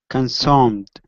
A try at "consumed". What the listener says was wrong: Okay, give me an oo sound instead of consumed. Consumed.